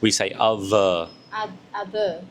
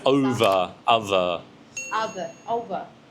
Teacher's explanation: So the TH sound we pronounce as a V sound.